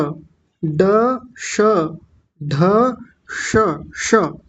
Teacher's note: जीभ ऊपर जाएगी सबसे ऊपर और गोल घूम जाएगी थोड़ी सी और एक अजीब सा उच्चारण आएगा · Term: मूर्धन्य शकार